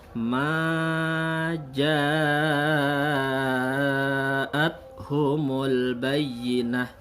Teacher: Nah, ja-nya panjang 5 harakat. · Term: mad wajib muttasil